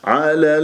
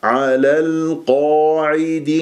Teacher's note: على اللام مفتوحه لاب ساكنه فانتبهوا على ولا تطول على لا ليست اللام رخوه لا تطيل جريان الصوت فيها هي بينيه